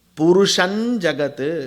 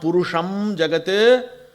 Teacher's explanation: Purusham, im followed by ja become inja.